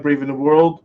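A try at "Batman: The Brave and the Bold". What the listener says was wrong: That is not what you said. You said Brave in the World is what I heard.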